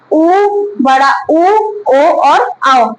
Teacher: जब इन स्वरों का उच्चारण करते हैं तो हमारा मुख किस प्रकार हो जाता है वृत यानी वृत के आकार में हमारा मुंह खुलता है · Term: वृताकार, वृत्ताकार स्वर